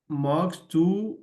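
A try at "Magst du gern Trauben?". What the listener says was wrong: मार्क्स, मोक्स नहीं, मार्क्स।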